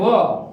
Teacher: વ છે એ દંત ઓષ્ઠ્ય છે. વ છે એ દંત ઓષ્ઠ્ય એટલે દાંતથી અને હોઠથી બંને જગ્યાએથી ઉચ્ચારાતો અક્ષર છે